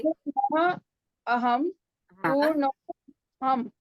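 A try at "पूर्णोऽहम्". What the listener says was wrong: Purnoham. You have to say it together in the Sandhih situation.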